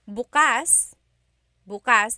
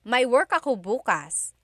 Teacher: If you say bukas, bukas, emphasis is on the first syllable. that means tomorrow.